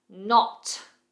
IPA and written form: nɒt (Knot)